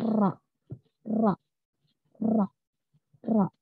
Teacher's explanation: ujung lidah menyentuh tempat yang sama berulang-ulang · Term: huruf ro